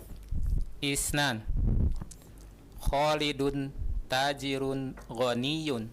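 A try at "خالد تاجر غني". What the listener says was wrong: Masya Allah.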